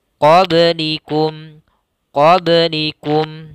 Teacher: kita pantulkan ba-nya karena ba salah satu huruf qalqalah. Qalqalah yaitu huruf yang memantul ketika dalam melafalkannya.